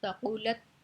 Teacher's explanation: تا باریک ہے، ٹھیک ہے، اس کے اوپر ہم آواز کو بند کر دیں گے